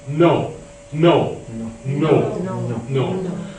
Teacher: We push the tip of the tongue off the back of the upper teeth.